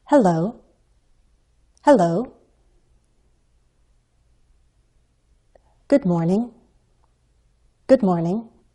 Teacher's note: the fall rise pattern to sound more polite